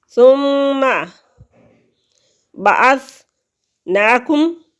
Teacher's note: نون کھڑی زبر ہے، ایک حرکت کے برابر لمبا کریں گے